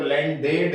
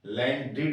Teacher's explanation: लैंड में ईडी जोड़ोगे तो लैंडेड नहीं होता, लैंडिड होगा। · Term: इड